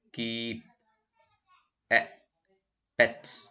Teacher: This is called unrounded vowels. There is no rounding of the lip. E, spreading level.